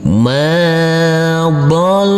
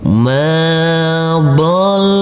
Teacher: Huruf lam nanti kita tekan dan kita tahan saja dengan 2 harokat. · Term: tasydid